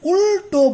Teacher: এই ল, এটা হচ্ছে দন্তমূলীয় ধ্বনি, কিন্তু যখন তুমি উল্টো বলছো তখন দেখবে এই ল কিন্তু দাঁতের জায়গায় উচ্চারণ হচ্ছে না, মূর্ধায় উচ্চারণ হচ্ছে